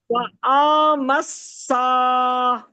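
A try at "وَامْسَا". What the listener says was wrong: وہ آ مس کیوں بھائی کیوں حمزہ میم زبر ام ہے ٹھیک ہے صحیح ہے میم سین زبر کیا ہے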